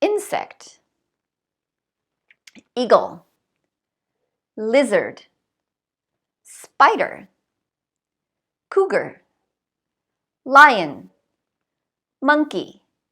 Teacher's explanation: All of these words have stress on the first syllable.